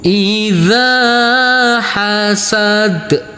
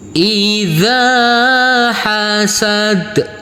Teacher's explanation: ke sebelahnya di sini sama saudara saudaraku nanti untuk di sini kita pantulkan karena ini huruf Dal adalah bacaan qolqalah